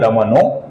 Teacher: दमनहा का जो विसर्ग है उसके आगे ह आने के पश्चात दमनहा का बन जाता है दमनो